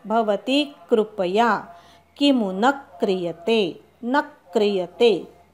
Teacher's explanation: क्री तिथे आघात द्यायचा